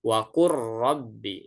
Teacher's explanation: Tapi karena dia bertemu dengan ro, maka lam fiilnya dia diidghamkan, bukan diizharkan.